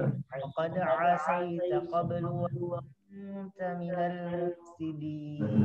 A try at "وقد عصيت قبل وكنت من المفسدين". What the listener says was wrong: لكن هذا ليس إشباع، هذا طريق الإشباع. تعمل 5 حركات 6 حركات الإشباع مرة ثانية.